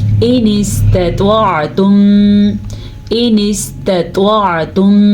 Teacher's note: تا باریک پڑھا جائے گا کیونکہ تا ہے، اس کا مخرج نرمی سے پڑھا جاتا ہے، لیکن طوا پر یعنی کہ موٹا پڑھا جائے گا